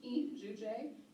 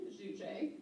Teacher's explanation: Um so, it's not in shujay, it's e shujay cuz it kind of comes through the nose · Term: nasalized I